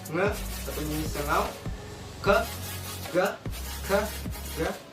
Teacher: Oke, selanjutnya yaitu velar, yaitu pada saat kalian belakang lidah bertemu dengan langit-langit mulut bagian belakang juga, atau langit-langit mulut yang bagian lembut